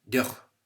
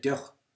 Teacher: EO, when followed by velar, so sounds pronounced at the back of the throat, velar consonants, that EO is short